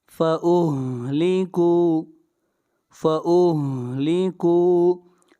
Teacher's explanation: کاف کو کھینچ کر پڑھیں گے، یہاں پر واو مدہ ہے